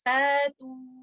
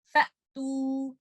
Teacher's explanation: آپ نے شدہ کا ہی ٹائمنگ دینا ہے حمزہ کو، آپ نے اس کو لمبا کر کے الف مد نہیں بنا دینا